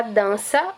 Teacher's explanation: Porque ele vai estar marcado pela nasalização na letra A